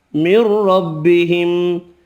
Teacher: ادغام بلا غنہ ہوگا، را زبر کی وجہ سے پر پڑھیں گے